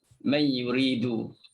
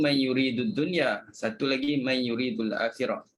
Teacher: Jadi bila nun mati bertemu dengan ya, bagi riwayat khalaf dibaca dengan idgham bila gunnah.